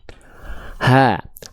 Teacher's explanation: karakteristik nafasnya berbisik lebih halus · Keluarlah dari bagian tengah tenggorokan huruf H kecil